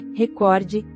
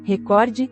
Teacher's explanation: a pronúncia correta do termo é recorde, paroxítona, enquanto diversos locutores da Globo pronunciam recorde, proparoxítona